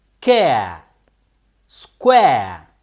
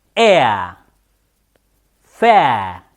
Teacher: The sound air is a combination of two short vowels, vowel sounds. The short vowel sound E and the other short vowel sound A.